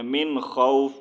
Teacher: ہم نے اس کو اخفا نہیں کرنا، ظاہر کر کے پڑھنا ہے